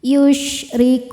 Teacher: Yusrikun ro dibaca tarqik karena barisnya di bawah maka bacanya tipis · ro dibaca tarqiq karena barisnya di bawah, maka bacanya tipis. Yushrikun, saat berhenti hukumnya mad arid li sukun, karena mad tabi'i bertemu dengan huruf yang disukunkan karena waqaf.